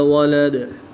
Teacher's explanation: دال کی دو پیش کو وقف کی حالت میں ساکن کر دیں گے تو یہاں پر وقف کی حالت میں قلقلہ خوب ظاہر کر کے پڑھیں گے